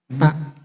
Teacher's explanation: Makhraj ta itu adalah adanya di ujung lidah ketemu dengan gigi seri atas.